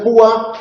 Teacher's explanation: En el caso de púa sí que tenemos una vocal cerrada, la u, pero es tónica. Al ser tónica es núcleo de sílaba y por lo tanto tenemos 2 sílabas